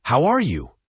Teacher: In fast speech, how are you often becomes how are you or even how you. The R is often reduced. It's about connecting the words, not saying each one separately. · In fast speech, how are you often becomes how are ya, or even how ya.